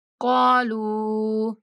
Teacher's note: यहाँ पे काफ को खींचेंगे और लाम को 3 सेकंड तक खींचेंगे।